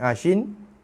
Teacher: Shin, ingat shin dia ada sifat tafashi, bersembuh macam tu khususnya bila dia berbaris mati ataupun berbaris sabdu. So jelaskan bunyi shin tu, tafashi dia tu, bunyi sh tu, tengah lidah tekan sikit. Tengah lidah menghampiri langit tengah.